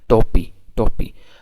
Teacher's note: i am pronouncing it unaspiratedly